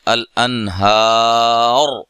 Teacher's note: وقف کی صورت میں الانہار، را کو ساکن کر دیا جائے گا. پیش کو ختم کر کے اگر ٹھہرنا ہے، وقف کرنا ہے یہاں، تو را کو ساکن کر دیں گے. اگر ملا کے پڑھنا ہے تو پھر پیش کو پڑھا جائے گا.